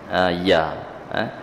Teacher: ya ni tengah lidah rapat ke langit-langit atas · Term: makhraj harful ya